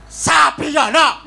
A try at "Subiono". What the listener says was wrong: Su, Pak Subiono, nganggone su, su, Subiono.